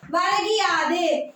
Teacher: அதாவது வரகு கூட்டல் யாதும் வரும்பொழுது வரகியாது. இந்த உகரம் இகரமாக மாறும் பொழுது தன்னுடைய முழுமையாக மாத்திரையான ஒரு மாத்திரை அளவில் ஒலிக்காமல் அரை மாத்திரை அளவு தான் ஒலிக்கும்